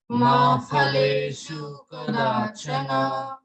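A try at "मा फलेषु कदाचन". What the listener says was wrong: Okay, in Sanskrit we do not say fa like we say in Hindi, so we say pha. Okay, pa and pha. So can you say ma phaleshu kadachana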